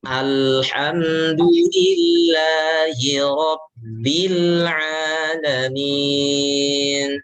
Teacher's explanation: Alirkan. Lam dialirkan ya. Sedikit dialirkan. Dia memang sifatnya tawasud. Pertengahan antara syiddah dan rokhawah. Tapi dia lebih untuk dialirkan ya.